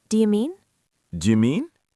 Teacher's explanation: Keep it light, keep the pitch going up slightly at the end because it's a question.